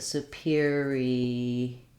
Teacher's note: superiority has stress on the or syllable